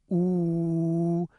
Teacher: But if you say the sound oo and look in your mouth, you might notice that a part of your tongue is up high, but it's the back part of your tongue, and it's raised up high in the back of your mouth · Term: back vowel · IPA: [u]